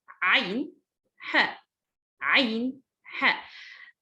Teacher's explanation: So I will say the عين and ha from the middle of my throat.